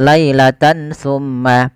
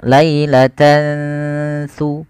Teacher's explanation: Tidak jelaskan suara nun, tidak dibaca lailatan summa. Tapi disamarkan, maka dinamakan dengan ikhfa. Ikhfa itu bacaan kita antara bacaan izhar dengan idgham.